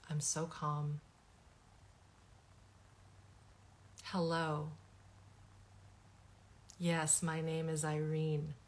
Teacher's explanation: There is this monotone lack of what's called prosody, voice intonation.